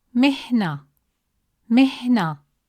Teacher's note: The sukun is placed on the letter ha making the sound pause briefly with no vowel after it. You'll feel a short stop before moving on.